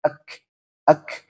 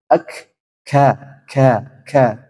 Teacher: ini ya memang dia dia Hames dan juga syiddah ek ek dia mengeluarkan Hames tapi suaranya tertahan ek ka ka k ya kan k ada hamusnya tapi suaranya